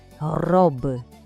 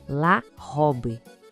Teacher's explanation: O R francês, ele não é na ponta da língua, ele vem lá de trás, da garganta. É como se a gente fosse arranhar um pouquinho a garganta.